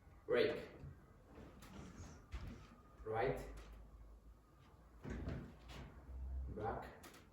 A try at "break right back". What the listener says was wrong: Yeah, that's better. You're doing something better now.